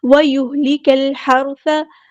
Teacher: را ہمارا heavy letter ہے، پورا ادا کریں گے · کاف کو ہم نے لام کے ساتھ ملا دینا، حمزۃ الوصل ڈراپ ہو جائے گا